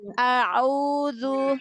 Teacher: Lalu huruf ain. Huruf ain naik sedikit dari hamzah.